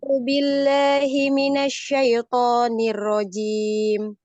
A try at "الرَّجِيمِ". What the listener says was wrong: Dilatih lagi ya huruf ro-nya. Udah bagus ya. Udah bagus. Tinggal lebih tebal lagi aja.